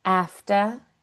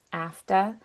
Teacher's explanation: the Rs are going to drop or kind of soft on those ending consonants after instead of after.